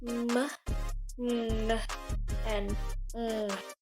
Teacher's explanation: produced when the air passes and escapes through the nose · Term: nasal